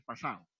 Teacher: la elisión de la D, es decir, evitan pronunciar la D